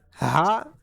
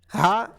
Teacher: Ha is pronounced from bottom part of throat and ha is pronounced from middle part of throat.